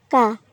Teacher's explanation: কাপ জিহ্বার গোড়া থেকে একটু আগে বাড়িয়ে তার বরাবর উপরে তালুর সঙ্গে লাগিয়ে আমরা কাপ উচ্চারণ করব। ঠিক কপ যেই জায়গা থেকে উচ্চারণ করেছিলাম তার থেকে একটু সামনে থেকে কাপ উচ্চারণ হবে এবং স্বাভাবিকভাবেই কাপ উচ্চারণ হবে।